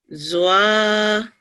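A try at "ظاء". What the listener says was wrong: There is no vowel inside. Wa, this is a thick letter.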